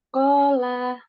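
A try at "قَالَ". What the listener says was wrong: Nah, kola. Bagus.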